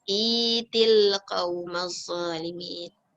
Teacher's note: Kalau kita dah jadi ya, itu tak boleh baca dia cepat. Kena baca dia panjang 2 harakat kerana alif wasal tu dah baris bawah bertemu dengan ya yang mati, jadi maknanya dia panjang for 2 beats.